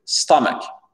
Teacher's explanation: L'accent tonique ici, il est sur la première syllabe. Et ce n'est pas un O, d'accord?